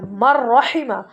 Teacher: میم کے اوپر تو زبر ہے، نون سائلنٹ ہے اور را کے اوپر تشدید آ گیا، تو میم کو را سے ملا کر پڑھا